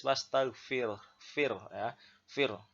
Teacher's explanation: ini ada ro sukun tetapi sebelumnya berharokat kasroh. Maka dibaca tipis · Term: bacaan tarkik